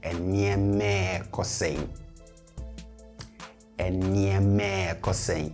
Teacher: in especially fast natural speech, we tend to glide over the re.